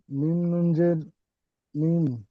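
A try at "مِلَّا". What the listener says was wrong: নুন পড়বে না, মিল লামজের মিল।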